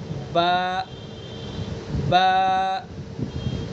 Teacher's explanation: با کا مخرج ہم نے پڑھا ہے دونوں ہونٹوں کی تری کا حصہ